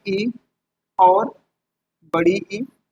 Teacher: तालु से हमारे बोले जाते हैं इ और बड़ी ई।